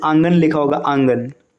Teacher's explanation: इसके उच्चारण के समय हवा मुंह और नाक दोनों से निकलेगी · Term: चंद्र बिंदु